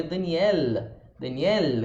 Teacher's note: com a língua subindo encostando no dente Esse é o elo em inglês · Então, o português de Portugal falaria Daniel, com a língua subindo e encostando no dente. Esse é o L do inglês. Então, esse Daniel, com a língua parando aqui em cima, é o L do inglês.